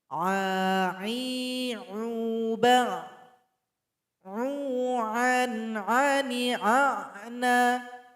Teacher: Huruf ain tempat keluarnya sama dengan huruf ha, yaitunya berada di tenggorokan pertengahan. Kira-kira di tempat tumbuhnya jakun laki-laki.